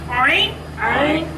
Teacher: হলকের তথা কণ্ঠনালীর মাঝখান থেকে উচ্চারিত হয়। উচ্চারণ করার সময় কণ্ঠটাকে একটু চিপা ধরতে হয়।